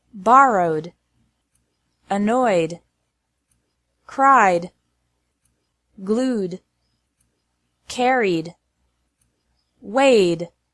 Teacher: ed is pronounced like d after verbs ending in a vowel sound.